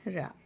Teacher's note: प्राणवायु निकलती है वह लुड़क लुड़क कर बाहर आती है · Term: लुंठित व्यंजन, प्रकंपित या लुंठित व्यंजन